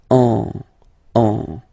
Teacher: you will get what we call a nasal, so it goes in your nose, and then you get the sound on. Okay, if you listen carefully, well, basically you don't listen, or you don't hear, sorry, any N in my pronunciation.